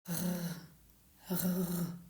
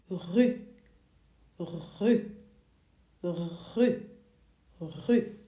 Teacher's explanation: We are not using the tip of our tongue at all. This sound, the r, it comes from way in the back of your throat. It's almost like a little gargle. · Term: the French R